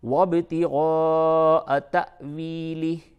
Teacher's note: الف کے اوپر جزم ہو تو وہ حمزہ ہوتا ہے، تو یہاں پہ جھٹکا ہوگا